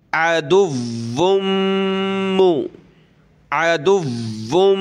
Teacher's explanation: इन्नहु नून पे गुन्ना होगा हा उल्टा पेश हु इन्नहु लकुम अदुव्वुम मुबीन आइन ज़बर आ दाल वाव पेश दुव वाव मीम दो पेश वुम मीम पेश मु वुम मु अदुव्वुम अदुव्वुम वाव के ऊपर तशदीद है तो सख्त करेंगे वाव को और मीम के ऊपर ये तशदीद है तो गुन्ना होगा नाक में आवाज़ पैदा करेंगे अदुव्वुम मुबीन।